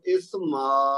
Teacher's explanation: اور اگر میں رکوں گا تو اسما, پھر الف مدہ بن جائے گا, تو 2 حرکت تک کھینچ دیں گے